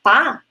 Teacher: quando a gente faz pá, né? Não sai muito ar. E para você fazer aquela fricativa, tem que sair.